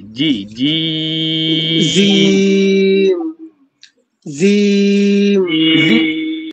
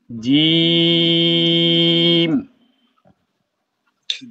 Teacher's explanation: জিমের মাখরাজ হচ্ছে জিহ্বার মধ্যখান।